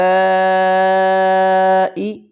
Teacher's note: اس کی نیچے زیر ہے تو یہ باریک ہوگی، موٹی نہیں پڑیں گے